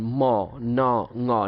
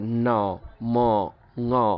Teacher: নাক দিয়েই রিলিজ হবে, অর্থাৎ নাক দিয়ে সাউন্ডটা বেরোবে এবং এয়ার ফ্লোটাও নাক দিয়েই হবে। দেখেন ম ন ঙ, নাক দিয়েই সাউন্ডটা বেরোচ্ছে, ন ম ঙ, নাক দিয়ে সাউন্ডটা বের হচ্ছে, যার কারণে আমরা এটাকে বলি কি নেজাল সাউন্ড।